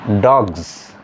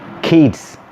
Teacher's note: when s occurs after a voiced sound s is pronounced as za for example d o z s dogs uh or k-i-d-s kids